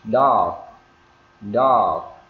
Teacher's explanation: Chúng ta đọc là dog thì cái âm g chúng ta nghe rất là nhỏ